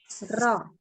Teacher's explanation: Karena getar-getar dia. Ya berulang. Langsung lidahnya tuh bergetar dengan berulang. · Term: takrirnya